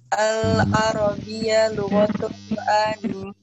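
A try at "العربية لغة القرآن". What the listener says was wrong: Bukan itu, ada nadanya. Al-Arabiyya. Al-Arabiyya lughatul Qur'ani.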